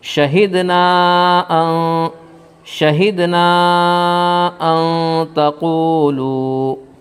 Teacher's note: واو ساکن سے پہلے پیش ہے، اس لیے واو مدہ ہوگا، تھوڑا کھینچ کر پڑھیں گے · نون ساکن کے بعد تا حرف اخفا کے 15 حرفوں میں سے ہے، اس لیے نون ساکن کا اخفا ہوگا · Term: مد منفصل